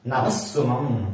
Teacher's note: విసర్గకు సా పరమైంది, ఈ సా ద్విత్వంగా మారింది.